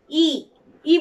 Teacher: ই বলার সময় আমাদের মুখ কিন্তু গোল হচ্ছে না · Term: অগোলাকৃত স্বরধ্বনি